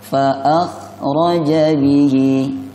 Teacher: huruf kha, jangan terlalu ngorok